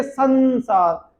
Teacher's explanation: देखिए साया, अनुस्वार के बाद सा आया, जब अनुस्वार के बाद सा आता है तो उसका उच्चारण आधे ना के जैसा होता है